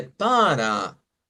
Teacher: se debe de utilizar la A media y entonces es donde se dice para, con una A media, no una A abierta como la del español.